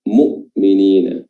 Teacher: Bukan di keluarnya makhrajnya, sukunnya di sini bukan di tenggorokan tengah mu'minina, tapi di tenggorokan bagian bawah aqsal halq, paling bawah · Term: huruf hamzah